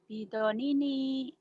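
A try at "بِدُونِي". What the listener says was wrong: Salah ini. Salah. Ninya panjang.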